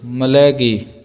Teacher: ਮਾਤੇ ਮਤੰਗਨ ਮਾਨ ਮਲੈਗੇ ਸ਼ਬਦ ਜਿਹੜਾ ਡੈਸ਼ ਲਾ ਕੇ ਪੋਲਾ ਬੋਲਣਾ, ਯਾਨੀ ਕਿ ਮਲੈਗੇ ਨਹੀਂ ਕਹਿਣਾ, ਮਲੈ ਕਹਿ ਕੇ ਫਿਰ ਗੇ ਬੋਲਣਾ